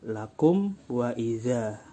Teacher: Kalau dilanjutkan lakum wa idza seperti itu, tidak ada dengung. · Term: idhar syafawi